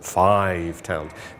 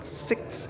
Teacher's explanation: the i in five is an open vowel: five towns; the i in six is a closed vowel